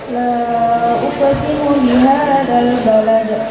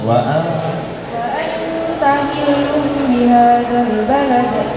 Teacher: kalau yang di akhir ayat namanya qalqalah kubra, lebih dipantulkan daripada qalqalah sughra